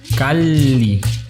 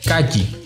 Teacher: Cuando veas una doble L, como en Cali, esta suena como si a cada sílaba le perteneciera una de esas L. Cali. O más sencillo, como una L larga.